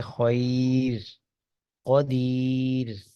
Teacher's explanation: را بہرحال وہ مرقق پڑی جائے گی، باریک پڑی جائے گی